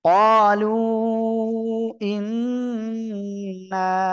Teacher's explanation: লু এখানে তিন আলিফ মদের চিহ্ন, তিন আলিফ টেনে পড়বেন